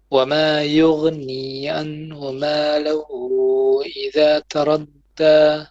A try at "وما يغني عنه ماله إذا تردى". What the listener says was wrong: Okay, وما يغني عنه عين, and then ماله. But you have also a mad here, 4 beats.